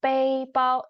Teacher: So 背 包 is pronounced as first tone 背 包 even though the pinyin is shown as fourth tone